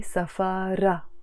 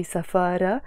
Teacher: it finishes with a te marbuta, which we don't pronounce. Usually when the word is on its own we say safara, but when it's followed by another noun which makes it mean something of something else, then we pronounce the te marbuta.